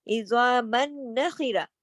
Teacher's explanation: میم دو زبر من جو ہے آگے نون کے تشدید میں جا رہا ہے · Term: ادغام